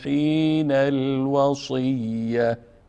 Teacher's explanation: حین حرکت آخر نون هم با لام میچسبونیم، پس الف نطق نمیشه